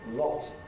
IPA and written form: lɒt (lot)